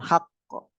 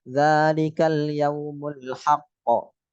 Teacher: Qalqalah kubra. Ada mantulnya harus kelihatan.